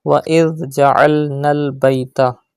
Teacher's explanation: Look at the word وَإِذْ جَعَلْنَا الْبَيْتَ. Pronounce dhal without whistle sound and stretch alif madda after noon.